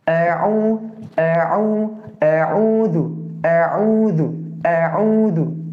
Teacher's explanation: Hamzah itu di aqsal halki, kemudian kalau ain di wastul halki. Jadi ketika dari bawah naik ke bagian tengah. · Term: hamzah dan ain